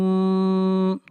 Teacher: را کو موٹا پڑھیں گے، را کے اوپر زبر ہے